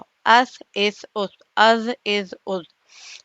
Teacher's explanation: اب ہم زبان کی نوک کو ثنایا علیہ یعنی اوپر کے 2 دانتوں کے صرف سرے سے لگائیں گے، یہ دیکھیے یہ سرے ہیں، یہ سرے ہیں، ٹھیک ہے، اور اس سے زبان کی نوک لگ رہی ہے، تو یہاں سے ث، ذال، ظ ادا ہو رہے ہیں، ث، ذال، ظ، اس، اس، اس، از، از، از، ہے نا، سمپل ہے، بہت ہی آسان ہے۔